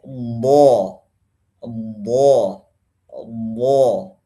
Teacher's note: Bibirnya tidak usah membulat. Sama dengan fathah yang lainnya.